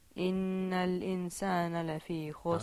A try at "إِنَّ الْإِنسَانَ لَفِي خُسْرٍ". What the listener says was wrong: No, we want our innal-insan. It's a little bit like idgham. Okay? So draw it out.